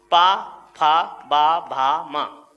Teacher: ओष्ठ का मतलब होता है दोनों होठों का प्रयोग। तो हमारे पे वर्ग के पांचों व्यंजनों में होठों का प्रयोग होगा, दोनों होठ आपस में मेल करेंगे